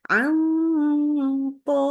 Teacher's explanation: Jadi langsung dengungnya tebal. An po ya. Jadi tidak boleh ditipiskan.